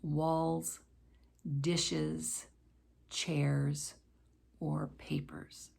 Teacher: when s or es is used to make a plural it will usually form that z sound